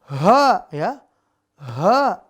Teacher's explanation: Yang membedakan adalah sifatnya. Kalau H dia tenggorokan bawah, makhrajnya, sifatnya, napas berhembus, tipis.